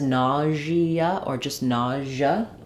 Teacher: for nausea, it sounds like we have vowel ah in the first syllable, and it's stressed. And then this is an example of letter S saying the zh sound, like it does in visual or measure.